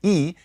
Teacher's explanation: E, is a high front unrounded vowel